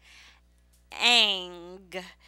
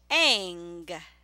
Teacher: this is the only NG ending with a long vowel